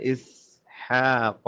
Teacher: اسحاق سین سٹی کی آواز نکالیں. اسحاق حا پہ حلق پہ زور دیں. قاف کو موٹا کریں.